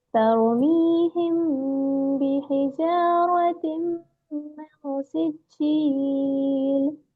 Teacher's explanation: میم کا جو مخرج ہے نا ہونٹ سے نکلتا ہے نا، اس لیے شفوی. جی تو اخفاء شفوی.